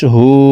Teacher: না হা উল্টা পেশ হু হার উপরে উল্টা পেশ আছে তাই ঠোঁট গোল করে এই হাকে এক আলিফ টেনে পড়বো